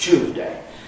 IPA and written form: ˋʧuːzdeɪ (Tuesday)